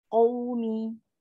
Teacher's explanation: waw sukun ni kan huruf lin, kita munculkan bibir. Bila kita munculkan bibir, kita kontrol udara yang keluar tu.